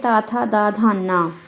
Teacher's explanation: यह दंत से बोले जाने वाले वर्ण होते हैं। इन्हें दंत्य वर्ण कहते हैं।